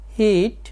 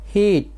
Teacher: তাড়াতাড়ি হচ্ছে আর এখানে শিফ অর্থাৎ কিছুটা দীর্ঘ হচ্ছে হিট হিট এই হিট উচ্চারণ দ্রুত হচ্ছে আর এই হিট উচ্চারণ দীর্ঘ হচ্ছে